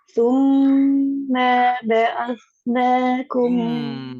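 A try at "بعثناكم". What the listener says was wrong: Ma ba'at. Tekan ain.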